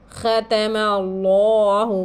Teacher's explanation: اللہ کے لام سے پہلے زبر ہے تو اس لام کو موٹا پڑھیں گے ہم. لام جلالہ کا قاعدہ کہتے ہیں اس کو.